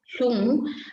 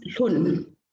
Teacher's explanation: The first example, to reach or to arrive, hlung, has the high tone in stem 1 and it becomes hlun. The velar nasal becomes an alveolar nasal. Nga has to become na, and the high tone becomes low tone in stem 2.